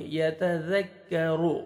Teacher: را کو موٹا کریں گے کیونکہ را کو پیش ہے، لام کے ساتھ ملائیں گے.